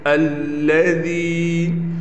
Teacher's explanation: الَّذِي، ذال یا زیر، ذی، یا ساکن ہے، یا ساکن سے پہلے زیر ہے، لہٰذا اس ذال کو ایک الف کے برابر کھینچ کر پڑھیں گے